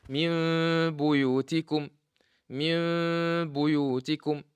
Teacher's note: When you change into meme, you will hide the meme with the sound coming from the nose, which is ghunna. How long is the ghunna? It's 2 vowels.